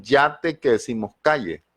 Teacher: Yeísmo, o sea, no hay esa diferencia entre la doble L y la Y